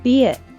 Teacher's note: as B ends with a vowel and it also begins with a vowel we'd link them together by adding a really soft sound in between to make a smooth transition